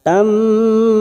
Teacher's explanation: yang berharakat Fath tanwin bertemu mim Idam bunah siap masuk P huruf mim dan ditahan selama tiga harakat